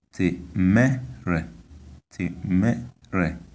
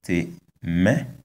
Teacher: We can see that the high tone is on the vowel of the second syllable